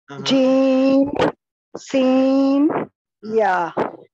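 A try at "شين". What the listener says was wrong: मेरी मोहतरम बहन, ये शीन है, आप कोशिश करें इसको शीन, शा, शा, सीन थोड़ा अलग है, वो अलग आएगा। शीन, तो ये मखरज नंबर हमारा सात था के हुरूफ़े शजरिया, जीम, शीन, या।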